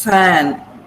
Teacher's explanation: We're narrowing the passage, the upper teeth come and touch the lower lip, and we release the air. That's it. Fan.